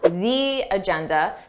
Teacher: notice how I let have that long e sound the agenda because agenda starts with a vowel this is not a rule